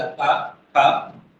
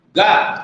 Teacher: गा में थोड़ा सा हिला होगा, वहां पर कंपन हुआ होगा